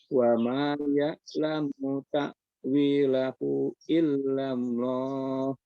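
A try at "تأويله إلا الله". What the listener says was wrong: Hu-nya jangan lupa Pak. Ini pembahasan kita hu. Illallah.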